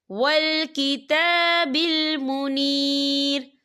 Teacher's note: تا کے پر کھڑی حرکات ہے، تو ہم اسے 2 یا 3 حرکت کے برابر کھینچ کے پڑھیں گے۔